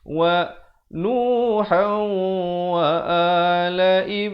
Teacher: Di sini idgham bi gunnah, asalnya Nuhan. Tapi bila datang waw masuk beserta dengung 2 harakat.